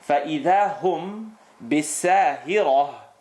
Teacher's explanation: Rule number 4, if there is a mim sukoon, followed by the letter ba, and the letter ba, in this case is here, the lips are going to vibrate and you're going to get a mim sukoon followed by ba.